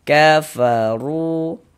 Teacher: Cuma di sini yang kita temui harakat dhammah. Maka huruf ro dibaca tebal, dibaca tabkhim. Sehingganya pengkalisan kita terangkat ke atas ketika kita mengucapkannya. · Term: tafkhim